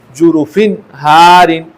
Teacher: اور 2 زیر کے بعد یہاں پر 6 حروف میں سے ہا آ رہا ہے، لہٰذا اس تنوین میں غنہ نہیں ہوگا۔ اس کے پڑھنے کا طریقہ یہ ہے کہ جیم پیش جو، را پیش رو، جو رو، فا 2 زیر فن، جروفن، ہا الف زبر ہا، جروفن ہا، را 2 زیر رن۔